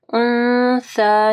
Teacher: یہاں پہ اخفا غنہ ہوگا اور کھڑی زبر کو پڑھنا ہے۔ سا جب آپ پڑھیں گے تو آپ کی زبان کی نوک جو ہے اوپر کے دو دانتوں کے پاس آئے گی